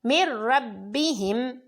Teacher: مثابۃ للناس من ربہم، اس میں نون ساکن کے بعد را ہے تو ادغام بلا غنہ